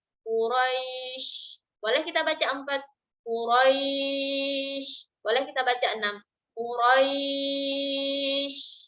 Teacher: Maka di sini berlaku mad lin yaitu Quraisy. Di sini boleh kita baca 2 harokat.